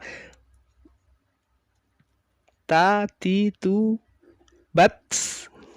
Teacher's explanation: Suaranya tertahan dulu, baru kemudian ada desis mengikuti setelah suara yang tertahan itu tadi.